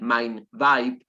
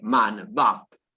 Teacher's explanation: Bien, y en el Yiddish del sur, entonces, en el Yiddish ucraniano, queda un cierto hueco cuando el diptongo ay se convierte en a, y por eso es una expresión como lo que en Yiddish estándar es mein Weib, se vuelve man Weib.